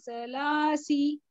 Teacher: स को जबान की नोक बाहर यानी दोनों दांतों के किनारों को लगना चाहिए सामने वाले